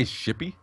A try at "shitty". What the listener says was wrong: Oh, you gotta pronounce those T's a little bit better.